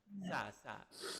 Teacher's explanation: Ujung lidah berada di antara dua gigi.